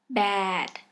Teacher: For example, when you have to say bad, the position of the sound B is two lips together very close. That's why your mouth can't open wide after you pronounce B.